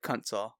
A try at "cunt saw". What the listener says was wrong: Yeah, it's because you don't say cunt right. cunt. Cunt saw. You don't stretch out the word cunt. It needs to be punchy.